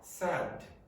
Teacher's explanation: It's very hard to tell, but there is a little bit of a lengthening of this vowel. And this is what English native speakers usually use to identify the difference.